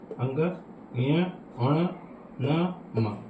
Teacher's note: वायु नाक व मुंह दोनों से निकलती है। ठीक है, प्रत्येक वर्ग का पांचवा अक्षर, अंग, य, अण, न, म, इन्हें क्या कहते हैं, पंचमाक्षर जो है अनुनासिक व्यंजन है।